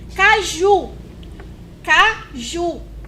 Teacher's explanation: Qual foi a sílaba mais prolongada foi o Ju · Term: sílaba tônica